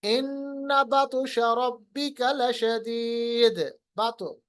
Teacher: कलकला तो होगा मगर उतना ज्यादा वाजिया, उतना ज्यादा इंटेंसिटी के साथ नहीं होगा।